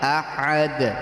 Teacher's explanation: دو پیش میں بھی اگر رکیں گے تو جزم دے کر سانس چھوڑیں گے. احدن، قل هو اللہ احدن، احدن.